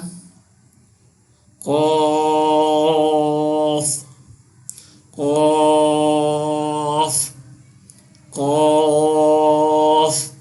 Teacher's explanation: قاف جو ہے اس کو بھی پر پڑھنا ہے، حروف مستعلیہ ہے